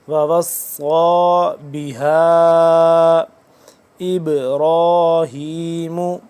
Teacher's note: ہا دو سے تین الف کے برابر اس مد کو لمبا کرتے ہیں